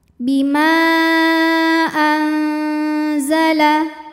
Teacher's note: maka mim Panjang boleh empat boleh lima harakat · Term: Mad Jaiz munfasil